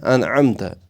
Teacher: انعمت جو ہے یہاں ہمیں اظہار نکالنا ہے یعنی نون کے بعد حروف اظہار ہے تو ہمیں کیا پڑھنا ہے ناک سے نہیں نکالنا ہے